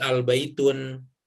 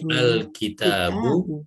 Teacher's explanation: memakai tambahan al di depannya, maka tidak berbunyi n lagi di akhirnya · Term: tanwinnya hilang